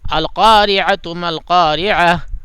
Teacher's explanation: یعنی ایسی ہا جس کے اوپر جزم ہو یہ مان لیا جائے گا اور ایسے پڑھا جائے گا. اور اگر سانس نہیں توڑیں گے، ملائیں گے تو وہ تا ہی رہے گی، ہا نہیں بنے گی